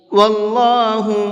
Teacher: اللہ کے لام کو منہ بھر کے پڑھیں گے، اس لیے کہ اللہ کے لام سے پہلے زبر ہے، اور اللہ کے لام سے پہلے زبر ہوتا ہے تو اس اللہ کے لام کو منہ بھر کے پڑھتے ہیں۔